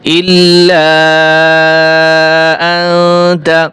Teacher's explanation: ইল্লা টান হবে, 3 আলিফ টান দিতে হবে